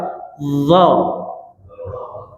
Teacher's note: dalamahnya satu dua tun [menjerit] >> ha hujungnya ya perhatikan d mengalir di mana d hujung lidah kena pangkal gigi a atas keluar sedikit aa lidahnya cuba d D >> d >> z >> zu >> ad >> ha dialirkan ya ni kan sukun ya cuba fi kami jelaskan ya fi lauhim mahfuz ha mengalir ya cuba satu dua tigaim.